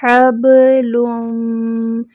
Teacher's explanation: لام کو جو ہے وہ میم سے ملائیں گے. لم، ہونٹوں کو گول کرتے ہوئے میم سے ملائیں گے.